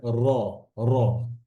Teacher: জিহ্বার যে অগ্রভাগ, আমাদের যে জিহ্বার যে মাথা টিপ, এটা কি হয়, পুনরাবৃত্তি হয় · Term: তাকরির